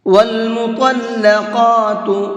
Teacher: اس لفظ کے اندر طا اور قاف دونوں کو منہ بھر کے پڑھیں گے، یعنی کہ پر کر کے پڑھیں گے